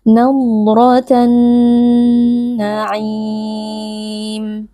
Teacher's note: Nah, di sini ada alif lam syamsiah karena ada alif lam bertemu dengan huruf nun yang menjadi huruf syamsiah. Alif lam lebur ke dalam nun dan nun menjadi nun bertasydid, maka di sini kita baca dengan gunnah atau dengan dengung